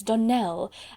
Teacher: the correct pronunciation of our name is Donell Accent on the last syllable